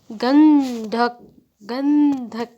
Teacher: गंधक यहां पे न का उच्चारण आ रहा है तो यहां पर क्या आएगा अनुस्वर आएगा यहां पर बिंदी आएगी